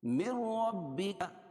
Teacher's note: من ربک ادغام بلا غنہ، کیونکہ نون ساکن کے بعد ادغام بلا غنہ کے 2 حرفوں میں سے را ہے تو یہاں ظاہر کر کے پڑھیں گے، یہاں غنہ نہیں کریں گے. من ربک، من ربک را پر ہوگی کیونکہ را مشددہ کے اوپر زبر ہے.